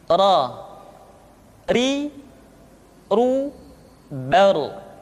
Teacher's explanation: Berikutnya adalah huruf ra. Diucapkan dengan menyentuhkan punggung lidah dengan langit-langit.